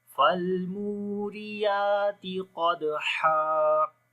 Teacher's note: قلقلہ والا حرف جب کسی لفظ کے بیچ میں آ جائے گا تو وہاں پر جو قلقلہ ہوگا وہ کمزور ہوگا۔ تو یہاں پر سختی کے ساتھ قلقلہ نہیں کریں گے بلکہ کمزوری کے ساتھ ہوگا۔